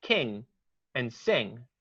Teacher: now we're at the back of the tongue, the velar sounds. And we have K and G and something called angma.